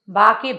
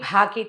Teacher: వీటిని అల్పప్రాణము మహాప్రాణము అంటారు. బా అంటే అల్పప్రాణం, భా అనాలంటే మహాప్రాణ అక్షరాలు. మహాప్రాణ అక్షరాలని అవి గట్టిగా ఒత్తి అవతల వాళ్ళకి విసుగొచ్చేలాగా కాదు, లోపల నుంచి శబ్దం రావాలి.